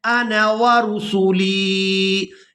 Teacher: یہاں پر جو آپ لوگ الف دیکھ رہے ہیں یہ الف مدہ نہیں ہے، تو ہم نے نون کو بغیر کھینچے ادا کرنا ہے